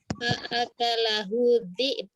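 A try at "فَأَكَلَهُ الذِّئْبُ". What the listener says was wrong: Bukan dhi'ab Ustazah. Ba-nya terakhir qalqalah. Nah, ya dhi'b gitu. Coba ulang.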